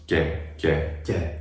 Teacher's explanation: It resembles a Y sound because the tongue is just a little bit more forward, basically, is what's happening. Right, the contact point of articulation is more forward in the palate, and that's also where the Y sound is created in the word yes, which makes it sound like there's a Y sound in it.